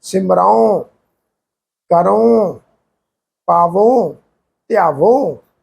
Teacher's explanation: ਜਦੋਂ ਉੜੇ ਨੂੰ ਔਂਕੜ ਦੀ ਮਾਤਰਾ ਹੋਏਗੀ ਨਾਲ ਨਾਸਕੀ ਟੋਨ ਚ ਉਚਾਰਨ ਹੁੰਦਾ